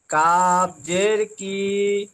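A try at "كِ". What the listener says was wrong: কে টান দেওয়া যাবে না, হারাকাত তো।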